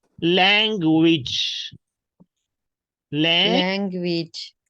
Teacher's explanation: U is pronounced as W sound and A pronounced as E sound